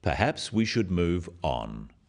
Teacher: this falling intonation makes it a more definite statement rather than a suggestion · it is said in a firm way with a falling intonation at the end practice with me perhaps we should move on this falling intonation